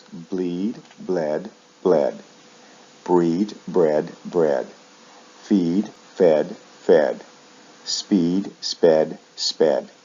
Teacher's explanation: notice the sound shifts in the past and the past participle verbs like feed shift vowel sounds in the past and the past participle usually from long e to short e